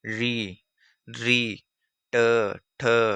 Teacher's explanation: जीभ ऊपर मुड़कर मूर्धा से टकराती है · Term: मूर्धन्य